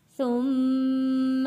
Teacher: میم کے اوپر غنہ ادا کیا ہے، میم کے اوپر تشدید ہے